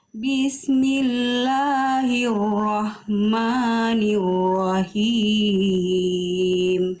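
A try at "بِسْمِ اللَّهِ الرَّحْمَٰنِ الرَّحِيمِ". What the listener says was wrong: Oke huruf rnya diperjelas lagi Bunda Jangan sampai hilang getarananya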